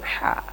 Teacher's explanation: Ha ini makhrajnya di tengah tenggorokan ya. Wastul halqi. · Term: huruf ha